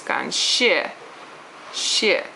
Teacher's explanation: 谢, once again, is a 4th tone. I don't know if you could tell that because it just sounds like you're yelling at somebody.